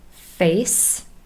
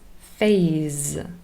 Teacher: It's really the unvoiced s and the voiced partner z.